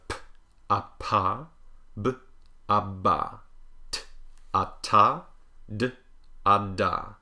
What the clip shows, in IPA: pb td